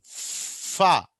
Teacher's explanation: ఫా అన్నప్పుడు గాలి మొత్తం ఆపడం లేదు, మనం గాలిని కొద్దిగా ఆపి కొద్దిగా గాలి ఎస్కేప్ అవుతూ ఉంటుంది, కొద్దిగా లీక్ అవుతూ ఉంటుంది అన్నట్టు. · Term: ఫ్రికటివ్స్